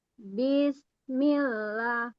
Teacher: Nggak langsung ke sin, tapi dipanjangkan bi-nya. Bismillah, itu nggak boleh. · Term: menambahkan huruf mad